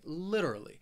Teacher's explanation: Now, this word has four syllables and the stress is on that first syllable. That third syllable, it has that schwa, that literally.